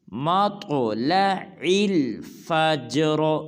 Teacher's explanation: بعض مسلمان پڑھ دیتے ہیں ہیا حتی، یہ بھی بالکل غلط ہے، اس کو پڑھیں گے ہیا حتی مطلع الفجر۔ مطلع میں طا کو پر ادا کریں گے اور قلقلہ بھی کریں گے